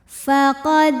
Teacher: Kemudian ada hukum qalqalah sughra, sebab ada huruf qalqalah yaitu dal yang sukunnya ini sukun asli dan ada di tengah bacaan. Maka kita baca dengan pantulan yang kecil.